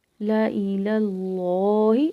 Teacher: یہاں پہ دیکھیں لفظ اللہ کا لام موٹا پڑھا جا رہا ہے، لا الہ اللہ. اب لا کو باریک پڑھا ہے، دوسرے لا کو بھی باریک پڑھا ہے، لیکن لفظ اللہ کا لام موٹا پڑھا